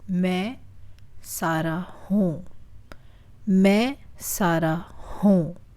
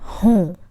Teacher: There's a nasal sound in मैं and हूँ. So it's like pushing the air from the back of your mouth to the front of your mouth.